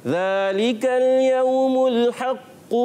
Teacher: काफ पर तशदीद भी बाकी रहेगी और जमाव भी रहेगा, मगर कलकला वैसा नहीं आएगा, और हम पढ़ते चले जाएंगे काफ की पेश को भी और फिर आगे मिला देते हैं।